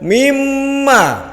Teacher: mimma sebetulnya itu min ma ya. Tapi langsung dimasukkan ke mim. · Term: Gunah